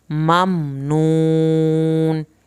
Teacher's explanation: جو واو ہے نون، اس کو تھوڑا اس طرح پڑھیں گے، نون یعنی واو ساکن کو کھینچیں گے، اور آخر میں نون ہے اس کو بھی نہیں ہلانا